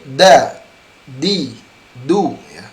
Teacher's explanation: akan lebih jelas art ipput ketika sebegitu Hai nah artinya pernah posisi huruf Dal tidak di atap mulut tetapi di gusi dan gigi seri